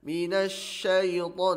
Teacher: huruf shin itu adalah huruf rokhawah. Huruf rokhawah, mengalir udara padanya